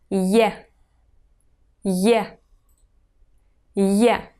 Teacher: It's pronounced like yeah. It's combined of two sounds Y and E.